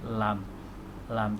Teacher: Jadi lidah kita angkat naik ke langit-langit bahagian depan. Lam, tapi lidah tidak sampai menyentuh gigi depan.